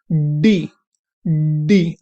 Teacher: आपकी tip of the tongue alveolar ridge को touch कर रही है